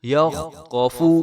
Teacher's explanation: یہ یاد رہے کہ فا کو ہم نے لمبا نہیں کرنا بالکل بھی، کیونکہ فا کے اوپر پیش ہے تو پیش کو لمبا نہیں کیا جاتا، اگر پیش کو لمبا کریں تو وہ واو مدہ بن جاتی ہے۔